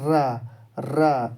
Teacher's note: जिसको बोलते समय हमारी जीभ लौट जाती है, यानी लपेटा खा के जो हमारी जीभ बोलती है उसे कहते हैं लुंठित व्यंजन · ये हमारी जीभ जो है ऊपर तालू से होकर के गुजरती है